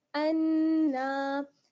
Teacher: پہلے غنہ اس کے بعد کھینچنا